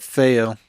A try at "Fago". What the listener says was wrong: Fago was good. He didn't pronounce the G.